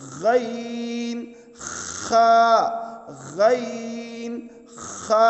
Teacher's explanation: ادنائے حلق. حلق کا وہ حصہ جو منہ کے قریب ہے